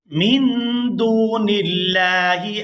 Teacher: یہاں لفظ اللہ کے لام کو باریک ادا کریں گے